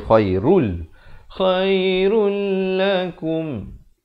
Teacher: Di sini idgham bila gunnah. Asalnya khairun, tapi bila datang lam jadi khairul.